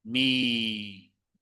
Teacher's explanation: So when you say me, Thais might say me with a narrow, straight mouth.